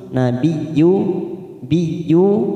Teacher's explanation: nabiyyu masuk pada huruf ya yang bertasdid tanpa ditekan lama-lama, hanya masuk nabiyyu, biyu, yu cuma bertemu sukun 2 harokat.